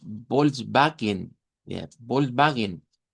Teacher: Luego, pues vamos a usar el diptong en cuestión, pero la W se va a convertir en V